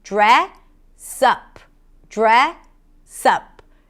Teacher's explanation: And then you connect the S to the next word, up. So actually what we hear is dress up.